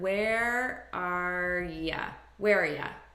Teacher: i'm taking just the r sound and i'm reducing this to ya which is a very common reduction and i'm just combining these as one word where are ya